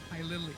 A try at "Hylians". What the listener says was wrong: Hylians. But adding that extra syllable.